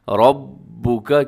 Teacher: را کے اوپر زبر ہے، را موٹی پڑی جائے گی اور ساتھ مضبوطی کے ساتھ آپ نے پڑھنا ہے، رَبُّكَ، کیونکہ